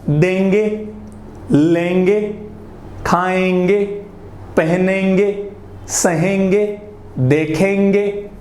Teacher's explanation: मतलब थोड़ा सा न का उच्चारण बीच में कुछ हो रहा है, वही हमारे अनुस्वार के कारण हो रहा है।